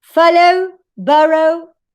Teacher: When you have in the final syllable diphthong O, yes, this syllable, this final syllable is not stressed.